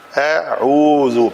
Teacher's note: تو حمزہ کی ادائیگی کو ادا کرنے کے لیے یہ جوف دہن سے ادا ہوتا ہے اور اس کا آسان ادائیگی ہے، بہت آسان ہے. اس کی آواز کہیں حلق سے نہیں آتی، یہ جوف دہن سے ادا ہوتا ہے